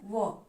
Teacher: दंत और ओष्ठ दोनों की सहायता से बोला जाने वाला वर्ण कौन सा है, व। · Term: दंतोष्ठ वर्ण